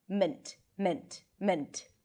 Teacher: an M, a schwa, which is a reduced vowel, and T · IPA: mənt